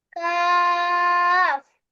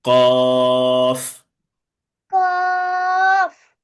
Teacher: কাফ হচ্ছে চিকন ভাবে স্বাভাবিক ভাবে, আর কফ হচ্ছে মোটা আওয়াজে ক।